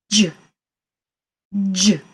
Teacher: You start like a D, J, J. And then your tongue kind of bunches into the middle of your mouth, not in the back, like your K or your G, into the middle, and the air goes over the top of your tongue. So, J, J. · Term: J sound